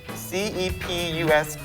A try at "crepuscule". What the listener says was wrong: L-E. Where are you getting crepuscular from?